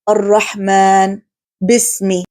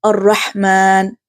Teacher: in Ha there is a weak or slight continuation of breath, whispering or expulsion of air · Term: al-hams